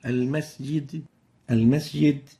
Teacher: quickly, short, sin with no whistle, while the right way of pronouncing it is like this. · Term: weak whistling of the sin